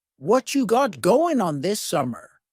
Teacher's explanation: What you is what plus you. You becomes cha.